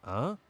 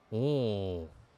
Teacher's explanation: tu dois utiliser ton nez. C'est ce qu'on appelle en français une voyelle nasale. Il en existe plusieurs.